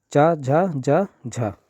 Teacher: हिंदी की तालव्य ध्वनियाँ है, तालव्य मतलब जो ताल से बोली जाती हैं